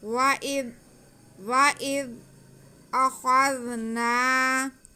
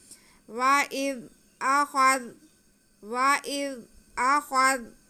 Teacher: جی، واو پہ زبر ہے اور حمزہ کے نیچے زیر ہے، آگے زال ساکن ہے، تو حمزہ کا زیر ہم زال کے ساتھ ملائیں گے اور زال کو نرمی سے پڑھیں گے، بالکل بھی سیٹی کی آواز نہ آئے